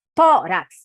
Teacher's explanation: Tórax, você já sabe que é a penúltima sílaba mais forte. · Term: paroxítona